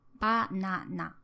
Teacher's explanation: So if you want to say banana, which is written with 3 kanas, it takes 3 beats.